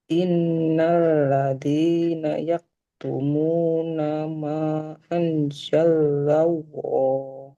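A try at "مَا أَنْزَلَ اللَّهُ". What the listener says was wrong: Nah, di anzalallah lamnya nggak ditasdid.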